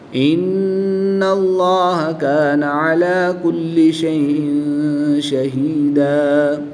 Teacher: نون مشدد میں غنہ کر کے پڑھیں گے. اس میں جلالت اللہ عز و جل کے لام سے پہلے حرف کے جب اوپر زبر ہے تو اس لیے اس میں جلالت اللہ عز و جل کے لام کو پر یعنی موٹا پڑھیں گے. اس میں جلالت اللہ عز و جل کے لام کے علاوہ ہر لام ہر حالت میں باریک پڑھا جاتا ہے تو ان کو ہم باریک پڑھیں گے.